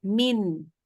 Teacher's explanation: kalau min itu kan kita ujung lidah kita kena ke langit-langit